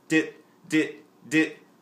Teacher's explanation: Now another word you can use to get a higher pitch sound is the word dit, D-I-T, dit. When you say dit, your tongue goes up to the roof of your mouth, which makes a smaller air chamber. Smaller air chamber makes the air go faster, higher pitch sound.